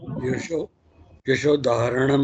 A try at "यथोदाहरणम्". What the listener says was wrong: यथोदाहरणम, यशो नहीं, यथो, यथा उदाहरणम,